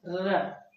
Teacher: और र प्रकंपित व्यंजन है, र बोलेंगे जो तंत्र झंकृत हो जा रही है अंदर से, और जीवा एकदम जैसे मुड़ जा रही है उसमें